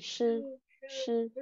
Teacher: Uốn lưỡi lên, chư, chư. Không bật hơi nhá, mình chỉ uốn lưỡi thôi. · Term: SH